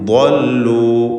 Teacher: ضلوا എന്നതിൽ ضاد ഇസ്തിഅലാൻ്റെ ഹർഫാണ് എന്നതുകൊണ്ട് തഫ്ഖീം ചെയ്ത് തടിപ്പിച്ച് ഉച്ചരിക്കുക. ضلوا അതിൻ്റെ പ്രത്യേകമായ മഖ്റജിൽ നിന്ന് വ്യക്തമായി ഉച്ചരിക്കാൻ ശ്രദ്ധിക്കേണ്ടതാണ്.